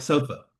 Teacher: So, the emphasis in sofa is on the so and not the f.